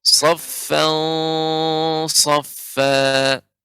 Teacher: Perhatikan di sini ada tanwin saffan, di sini bertemu dengan huruf shad. Shad termasuk huruf isti'la, maka dia baca dengan tebal.